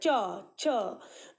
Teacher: कर रहे तो देखिए तालू से आ रहा है च च जीभ को जीभ को हम तालू से स्पर्श कर रहे हैं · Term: च वर्ग